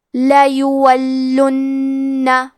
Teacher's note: کلمت لیولن میں لام پہ زبر ہے یا پہ پیش ہے پھر واو پہ زبر ہے تو ہم یہ تینوں حرکات کو ظاہر کریں گے. حرف اللام پہ تشدید ہے تو ہمیں 2 حرف کے برابر لام کو پڑھنا ہے کیونکہ تشدید کی اصلیت 2 حرف ہے. · اور کیونکہ تشدید پیش کا ہے تو ہمیں پیش کو بھی ظاہر کرنا ہے. حرف نون پہ تشدید ہے تو ہم 2 حرف کے برابر نون کو پڑھیں گے. لیولن.